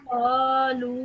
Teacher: this is a extended elongation, so medium elongation, so around 3 seconds